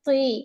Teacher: نا تا اور تو کی ساؤنڈ مطلب سیم نہیں ہونی چاہیے، تا کی آواز نہیں آنی چاہیے، تو ہیوی لیٹر ہے، تھوڑی سی ہے نا زبان کی جڑ اٹھائیں گے